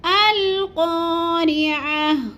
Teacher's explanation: قاف کو تھوڑا سا ہم نے لمبا کرنا ہے کیونکہ ادھر الف مد ہے